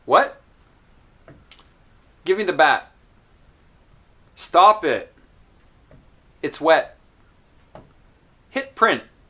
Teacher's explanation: try to notice that the last T at the end of the sentence is not released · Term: unreleased T